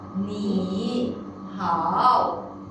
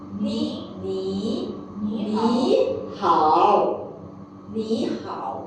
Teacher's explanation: We will turn the first character to tone number 2.